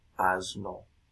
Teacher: Este cambio la sonorización de la s delante de una consonante Sonora